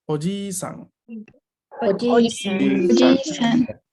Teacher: Oji-san tiene una I larga y la no pronunciación de la I larga va a hacer que uno termine diciendo tío y no abuelo, porque tío es oji-san.